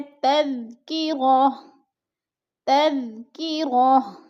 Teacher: دو پیش تنوین کو ہم نے وقف کی صورت میں تذکرۃن نہیں پڑھنا، بلکہ اس کو پڑھنا ہے تذکرہ، تذکرہ۔